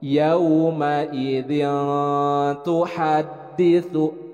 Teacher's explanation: Nah, huruf za juga idzin, bukan idin. Kemudian ada tanwin bertemu dengan huruf ta, dibaca ikhfa, didengungkan, ditahan 2 harakat.